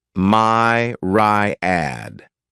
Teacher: this word has three syllables and the stress is on the first syllable